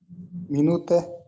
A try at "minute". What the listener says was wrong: Бул акыркысында е тамга келсе, любой сөздө. Англисчеде любой сөздө аягында и туруп калса, ал окулбай калат. Minute. Е окулбай калат.